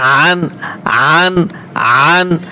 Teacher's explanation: আইন গলার ভিতরে চাপিয়ে বলতে হবে